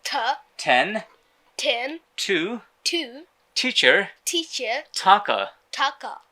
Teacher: জিহ্বার সামনের অংশটা উপরের দাঁতের গোড়ায় নিয়ে যেতে হবে। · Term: ঠ